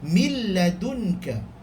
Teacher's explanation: Contoh, mil ladunka, dia tak ada bunyi mil, tak mau. Mil, masuk terus lam, seolah-olah kita akan baca lam terus, tidak memandang huruf nun.